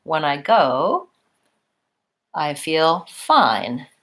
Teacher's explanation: then our main drop-off comes on fine · we're gonna rise up when I go and then we're not gonna drop all the way off because there's more to come when I go I feel fine then our main drop-off comes